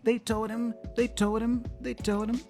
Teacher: the him there is pronounced as an m so the H is dropped and I join the M with the D for toad totem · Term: connected speech pattern